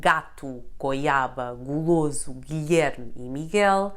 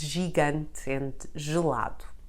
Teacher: it is read as [g] in words like gato, goiaba e guloso, Guilherme e Miguel, but read as [ʒ] in the words gigante and gelado. And those are precisely the two sounds of the letter G in Portuguese.